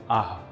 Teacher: the sound aa followed by expelling the air out